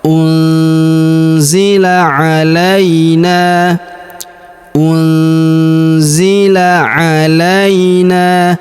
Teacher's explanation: Huruf la kita ayun sekali karena terdapat ya sukun di depannya.